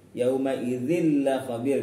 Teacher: Kemudian di sini ada tanwin kasrah bertemu lam, contoh dari idgham bila gunnah. Ya, idgham bila gunnah, dimasukkan tanpa dengung.